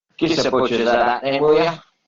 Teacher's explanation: Gives a butchers, y vean, otra vez tenemos la glotalización de la alveolar